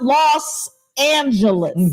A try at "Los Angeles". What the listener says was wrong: No T. Los Angeles.